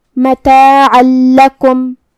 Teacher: لام حروف الادغام بغیر غنہ میں سے ہے اور ادغام کا معنی ہے حرف کو حرف میں داخل کرنا تو ہم یہ تنوین کو لام میں ملا کے بغیر غنہ سے لیکن تشدید کے ساتھ یہ حکم کو ادا کریں گے